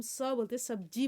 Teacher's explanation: जब हम स बोलते सब्जी बोलते तो हमारे दांतों में टकराती है आवाज। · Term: दंती स